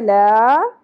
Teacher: لا، اس کو الا نہیں پڑھنا، الا نہیں ہے، یہ حمزہ نہیں ہے، عین ہے. لا، لام کے اوپر کھڑی زبر ہے، ایک الف کے برابر کھینچیں گے